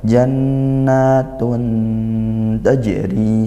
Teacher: Dibaca samar tidak jelas tidak juga masuk gitu ya. Samar dan dengung. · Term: ikhfa haqqiqi